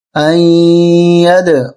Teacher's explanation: یہاں قلقلہ ہوگا دال پہ